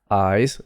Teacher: the s becomes voiced into sort of a z sound